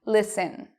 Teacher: I do not say listen. I say it with an S, but no T.